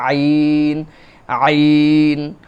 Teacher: এই গলার মধ্য জায়গা থেকে আইন